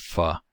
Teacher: in addition to the tongue articulation and for our labio-dental sounds we have the lower lip touching the upper teeth